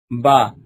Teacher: دونوں ہونٹوں کے تر حصے سے ادا ہوتا ہے